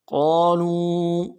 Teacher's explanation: قاف کے بعد الف مدہ ہے، کھینچیں گے، لو میں واو مدہ ہے، اس کو بھی کھینچیں گے